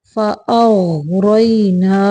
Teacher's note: غین کو موٹا کرنا ہے، کلکلا نہیں کرنا